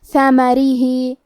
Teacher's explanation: حرف را کا حکم ہے ترقیق تو ہمیں را کو پتلی آواز میں پڑھنا ہے